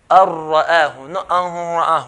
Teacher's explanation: we're going to merge the noon into the ra without any nasalization sound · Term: merging